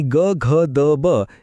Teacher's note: मृदू वर्णांचा उच्चार अगदी हळुवार आणि नाजूक असतो त्यात आवाजाचे कंपन किंवा नाद निर्माण होतो ज्याला आपण घोष वर्ण म्हणतो.